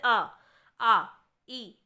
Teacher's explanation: जहां पे अनुनासिक नहीं है यानी कि नाक से हवा नहीं निकलती है केवल मुख से हवा निकलती है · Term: निर अनुनासिक